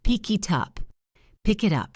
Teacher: Connect the K to the I and the T to the U.